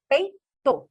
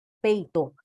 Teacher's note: Então eu tenho e e i na mesma sílaba. O e é vogal e o i é semivogal. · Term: ditongo decrescente